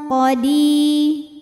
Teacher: Ya Sukun didahului kasrah maka dipanjangkan dalnya dua harakat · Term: Mad Thobi'i